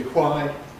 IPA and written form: hwaɪ (why)